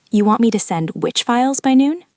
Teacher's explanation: You repeat the part of the sentence you did understand and you replace the missing information with a question word using a specific rising intonation.